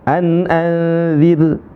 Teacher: Karena ra sukunnya sebelumnya adalah kasrah maka dibaca dengan tarqiq namanya.